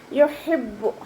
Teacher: ഹ എന്നുള്ള അക്ഷരത്തിൻ്റെ സൗണ്ടിനെ തൊണ്ടയുടെ മധ്യഭാഗത്ത് തന്നെ കൊണ്ടുവരാൻ ശ്രദ്ധിക്കുക